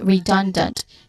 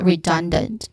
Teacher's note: The second syllable is the stressed syllable here